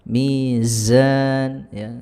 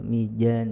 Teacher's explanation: za-nya juga kena ini, mizan kurang rakhawah, kurang mengalir